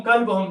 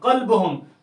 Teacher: آپ نے اس کاف کو زبان کی جڑ سے ادا کیا، قاف پڑھا